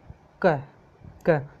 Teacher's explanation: अपने जो जीभ का पिछला भाग है ना वो सॉफ्ट पैलेट से टकराता है और जगह कम हो जाती है, तब ये ध्वनि निकलती है, आप बोल के देखिए, क, तो वेलर का मतलब कंठ होता है, तो कंठ से टकराता है, और इसके अलावा प्लोसिव इसके जो साउंड होता है वो गति से निकलता है, क ग, अच्छा जी, ये हो गए अपने प्लोसी वाले हो गए। · जो जीभ का पिछला भाग होता है और जो सॉफ्ट पैलेट होता है उसके बीच में दूरी कम होती है, तब ये ध्वनि निकलती है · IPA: k